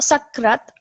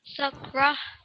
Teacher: So not sakrat. Remember, with this ta marbuta specifically, it becomes the ha, doesn't it?